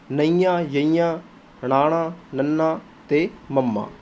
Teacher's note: ਅਨੁਨਾਸਿਕੀ ਵਿਅੰਜਨ ਉਹ ਧੁਨੀਆਂ ਹਨ ਜਿਨ੍ਹਾਂ ਦੇ ਉਚਾਰਨ ਸਮੇਂ ਕੁਝ ਆਵਾਜ਼ ਨੱਕ ਵਿੱਚੋਂ ਨਿਕਲਦੀ ਹੈ। ਕੀ ਹੁੰਦਾ ਦੋਸਤੋ ਜਦੋਂ ਆਪਾਂ ਇਹਨਾਂ ਦਾ ਉਚਾਰਨ ਕਰਦੇ ਹਾਂ ਤਾਂ ਕੁਝ ਆਵਾਜ਼ ਜਿਹੜੀ ਹੈ ਕੀ ਹੁੰਦੀ ਹੈ ਨੱਕ ਵਿੱਚੋਂ ਨਿਕਲਦੀ ਹੈ।